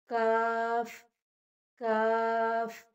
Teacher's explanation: काफ ज़बान की जड़ और तालु के सख्त हिस्से से अदा होता है और ये मोटी आवाज़ में अदा नहीं होता